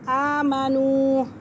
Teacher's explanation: ایک الف کی مقدار کھینچیں گے اور واو ساکن سے پہلے پیش تو یہ واو مدہ۔ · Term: الف کھڑا زبر